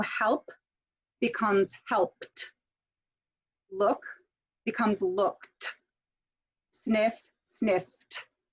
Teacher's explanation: the sound that you're going to create at the end will sound like a t